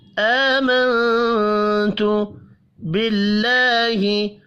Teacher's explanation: اللہ کا نام زیر کی وجہ سے باریک پڑھا جائے گا